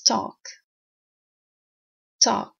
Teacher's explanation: It's written with L, but it's never pronounced with L, unless you live in southern part of America. Talk, you can use it as a verb, you can use it as a noun. Never pronounce the L. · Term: silent